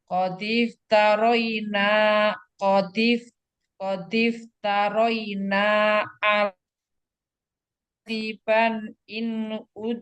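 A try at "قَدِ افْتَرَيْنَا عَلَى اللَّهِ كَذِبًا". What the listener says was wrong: Diulang Umi, suaranya patah-patah. Qadif taroina. Iya, suaranya patah-patah Umi.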